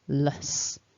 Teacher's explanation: the luss which has got that weak schwa vowel and it ends with a nice hissing s sound